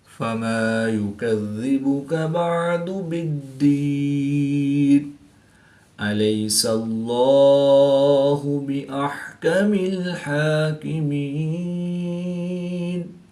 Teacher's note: یا ساکن سے پہلے لام پر زبر ہے تو یا لین اس کو لمبا نہیں کریں گے